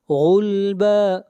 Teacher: غین کو موٹا پڑھیں گے، غین حروف استعلاء میں سے ہے